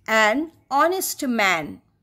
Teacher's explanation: एच सामने तो लगा रहेगा लेकिन एच पूरी तरह से चुप रहेगा